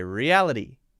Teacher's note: it's the light D sound to replace the T